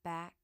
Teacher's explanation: we stop the flow of air here closing our vocal cords while the back part of the tongue reaches up to touch the soft palate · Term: k sound